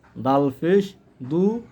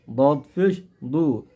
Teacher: দাল ফিস দু, দদ ফিস দু। দালের উচ্চারণ একটু পাতলা হয়, দদ এর উচ্চারণ একটু মোটা হয়।